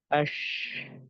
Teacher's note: یہ اب دیکھیے، یہ صرف یہ صفت جو ہے وہ صرف اور صرف ایک حرف میں پائی جاتی ہے، شین کے اندر. شین کو جب ادا کرتے ہیں نا تو ایسے لگتا ہے کہ آواز سے منہ بھر گیا ہے سارا. اش، ٹھیک ہے نا، منہ پورا بھرا ہوا لگتا ہے. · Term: تفشی